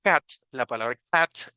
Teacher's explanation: no es a como en el español sino pareciera a veces como una mezcla entre una a y una e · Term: sonido corto de la a